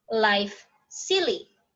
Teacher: a partial closure is made by the blade of the tongue against the alveolar ridge. Air is able to flow around the sides of the tongue. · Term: liquid